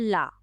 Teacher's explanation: तो पासर्विक व्यंजन जो है वह होता है ल